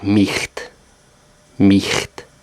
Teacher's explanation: in the end or middle of a word, it's a guttural ch sound, like the Scottish loch